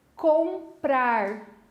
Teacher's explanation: boca aberta, não saiu o som aqui pelo nariz.